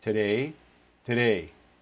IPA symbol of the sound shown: e